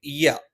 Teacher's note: യ, നാവിന്റെ മധ്യഭാഗം മേലെ അണ്ണാക്കിലാണ്.